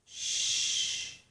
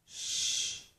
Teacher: The tongue does not touch the roof of my mouth, but it just approaches the roof of my mouth. It gets close to the roof of my mouth. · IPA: ʃ